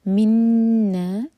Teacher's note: یہ بھی ہے ادغام غنہ کے ساتھ، ایمٹی نون کے بعد نون آ رہا ہے